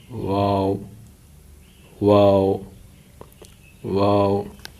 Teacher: واو جو ہے ہونٹوں کو گول کرنے سے ادا ہوتی ہے